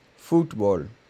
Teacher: the accent on this word is supposed to be on the second to last syllable